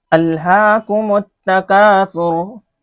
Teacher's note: ہا کے اوپر کھڑا زبر ہے، کھڑا زبر کو کھینچیں گے